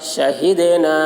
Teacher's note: دال حروف قلقلہ میں سے ہے اور اس پر جزم ہے، اس لیے دال میں قلقلہ ہوگا. شہیدنا الف سے پہلے زبر ہے، الف مدہ ہوا، اس لیے الف مدہ کو ایک الف کے برابر کھینچ کر پڑھیں گے. حرف مد کے بعد حمزہ دوسرے کلمہ میں ہے، اس لیے مد منفصل ہوا.